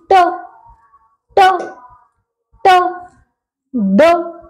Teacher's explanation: Tongue and teeth ridge मिलके ये sounds हैं जो वो है प्रोड्यूस कर रही हैं।